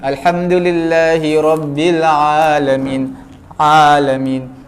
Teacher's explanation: Mana ain bukan daripada hidung, daripada mulut.